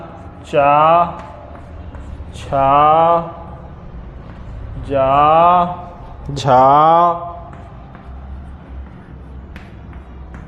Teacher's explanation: जो चा वर्ग है वो तालु से बोला जाएगा।